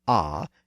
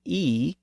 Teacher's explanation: the sound a is pronounced in the lower back part of the oral cavity and the sound e is pronounced in the higher front part of the oral cavity